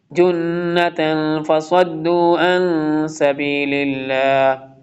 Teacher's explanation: جنة نون مشدد ہے، اس کو غنہ کے ساتھ پڑھیں گے